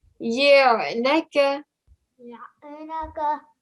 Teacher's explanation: When you're joining the ya to the ayn, you have to show, it's sort of like a jerking sound you're giving on the ayn because it's from the middle of the throat